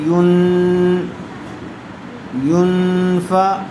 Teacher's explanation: آپ کو سمجھایا گیا تھا کہ تنوین یا نون ساکن کے بعد اخفاء کے 15 حروف میں سے کوئی ایک حرف آ جائے تو وہاں اخفاء ہوگا، یعنی غنّے کے ساتھ اخفاء کر کے پڑھیں گے